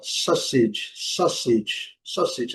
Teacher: Esse U não é pronunciado, mas ele faz a combinação com o A, dando um som quase que de O